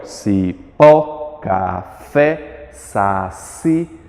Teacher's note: Eu tenho as palavras que são chamadas de oxítonas, quando eu tenho a vogal mais forte, a sílaba tônica é a última.